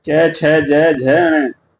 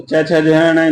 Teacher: तो च, छ, ज, ण जो है तालव्य से बोले जाते हैं। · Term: तालव्य वर्ग